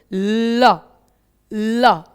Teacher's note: उच्चारित करते समय हमारी जीव जो है ल ल ध्यान दीजिए ला का जब उच्चारण करते हैं तो जो ला है वह मसूर पर जीभ लगाते हैं · इस तरीके से उठती रहती है मसूरे पर टच रहती है मसूरे पर जीभ टच हो जाती है और हवा जो है वह साइड से दोनों तरफ से निकलती है · टच रहती है मसूड़े पे जीभ, और वायु जो है जीभ के बगल से निकल जाती है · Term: पार्श्विक व्यंजन